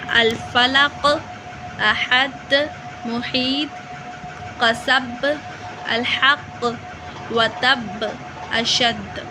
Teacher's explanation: strong vibration, clear bouncing, and more powerful than lesser Qalqalah. No extra vowels are adding anything. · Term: greater Qalqalah